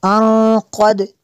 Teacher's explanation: نون ساکن کے بعد قاف حروف اخفا میں سے ہے، یہاں پہ اخفا ہوگا، اس لیے یہاں پہ غنہ کریں گے۔